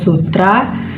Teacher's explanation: gugus yang konsonan keduanya berupa konsonan getar atau R